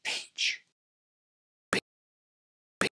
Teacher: this aspiration sounds like whisper, as in peach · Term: aspirated P